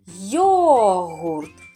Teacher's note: Так, на перший склад, на голосну О.